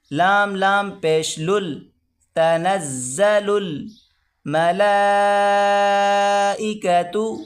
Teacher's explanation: یہ دو لام، آگے جو الف آپ کو نظر آ رہا ہے یہ نہیں پڑھا جائے گا، لام کو سیدھا لام کے ساتھ ملا کر پڑھیں گے